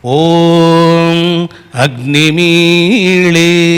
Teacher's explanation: మీ అనే అక్షరం పైన స్వరితం ఉంది.